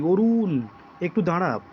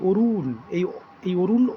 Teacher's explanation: অ শব্দের উপর অতিরিক্ত মাত্রায় বা আমরা জোর দিচ্ছি বা টেনে উচ্চারণ করছি। এই রকমভাবে যখন উচ্চারণ হবে তখন তখন আমরা তাকে প্লুতস্বর বলতে পারি।